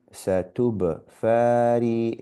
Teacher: Here the fa, because there's a fatha followed by an alif, we elongate the sound. And because here's a ra with a e followed by ya and sukoon, the ya and sukoon tells us that this e must be elongated.